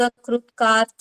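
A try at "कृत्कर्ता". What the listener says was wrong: ಕಾರ್ತ ಅನ್ಬೇಡಿಮ್ಮ, ಕರ್ತ ಅಂತ. ಅಲ್ಲಿ ಕ ಇದೆಯಾ ಕ ಇದೆಯಾ? ಅದನ್ನ ಹೇಳಿ ಸಾಕು.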